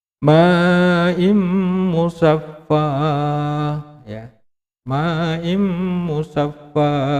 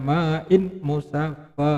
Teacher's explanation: Nah, ini ketika ada nun sukun atau tanwin bertemu dengan huruf mim, maka bacaannya juga idgham bi gunnah. Jadi tanwinnya itu dileburkan dengan huruf mim yang mengikutinya